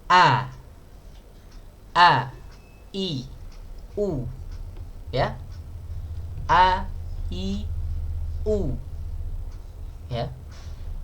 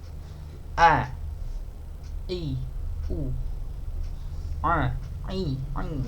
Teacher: posisi makhraj huruf hamzah terletak di posisi tenggorokan paling bawah ya. Makanya ketika seseorang mengucapkan huruf hamzah, maka yang benar adalah keluar dari tenggorokan.